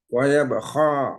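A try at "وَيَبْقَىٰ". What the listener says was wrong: waya beko jangan kho. Ya, waya beko.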